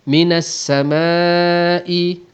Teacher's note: alif mad bertemu dengan hamzah dalam satu perkataan, hukumnya mad wajib muttasil, kita panjangkan 4 harakat ataupun 5 harakat.